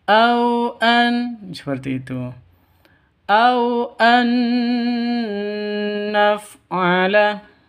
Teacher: nun mati bertemu dengan nun. Cara bacanya masuk ke nun yang kedua, terus disertai dengung dua ketukan karena idgham bi gunnah.